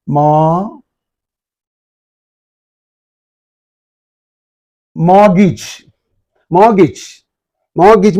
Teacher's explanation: R is dropped and T is dropped